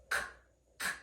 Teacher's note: The back of the tongue is moving this time, not the tongue tip. The back of the tongue reaches up to the hard palate, k, k, and makes contact.